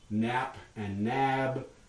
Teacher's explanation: English words that end in stops following a vowel that differ only in their voicing